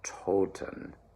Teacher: Nice big round open O.